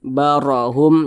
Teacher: huruf ro dibaca tebal karena dia memiliki tanda baca fathah dibaca tkhim barohum jadi lidah kita itu terangkat ke atas barohum gitu kemudian